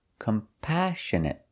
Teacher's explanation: We put the stress on the second syllable